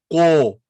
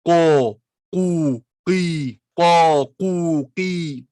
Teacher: Le Qaf est une lettre grave, emphatique. Ça veut dire qu'on prononcera de façon grave la voyelle qu'il va avoir. Qo, pas qe.